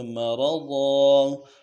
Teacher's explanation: را کو موٹا کرنا ہے، ضاد کے اوپر تنوین ہے، غنہ کرنا ہے، ضاد کو موٹا کرنا ہے